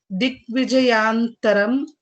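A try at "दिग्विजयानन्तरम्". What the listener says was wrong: Digvijayanantaram. See, nakara is there.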